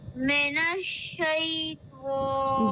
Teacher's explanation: شین کی ساؤنڈ آپ کو 2 بار آنی چاہیے۔ جب آپ اس کو پڑھیں گی تو ایسا لگنا چاہیے کہ آپ 2 بار شین کو پڑھ رہی ہیں۔